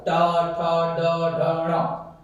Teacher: ट ठ ड ढ ण र और सकार इनका उच्चारण स्थान क्या रहेगा मूर्धा ठीक है क्योंकि इनकी मूर्धा के बिना इसका उच्चारण नहीं किया